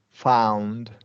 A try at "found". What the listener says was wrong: A little bit wider with that one. Stretch those, yeah, those corners of your lips have to start wide.